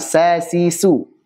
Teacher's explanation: dari ujung lidah bersama bagian atas dari gigi seri bawah